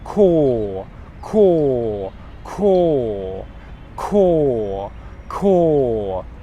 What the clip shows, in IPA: kɔːld